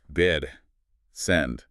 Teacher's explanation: The tongue sits comfortably in the middle front of the mouth.